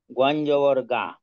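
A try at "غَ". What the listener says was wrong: গইন জবর, গইন জবর কিন্তু গা হবে না। সাতটা আটটা হরফ ছিল, জবরের উচ্চারণটা আকারের মতো হয় না। গইন তাদের একটা বিয়ে গ, বিয়ে গ।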